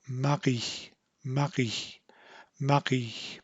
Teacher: She's instead leaving the tongue forward with the tip of the tongue forward, and the R is being made by kind of a contact or a brushing at the very back of the tongue. So it's kind of brushing or coming up against the soft palate. And because there's a momentary block in the flow of air, there's a resulting kind of a popping sound after she brings the back of her tongue back down.